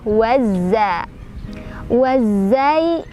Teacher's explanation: alif lamnya kita lewat, jadi kita langsung idghamkan ke huruf zai. Jadi biasa disebut dengan idgham syamsiyah ya, wazza.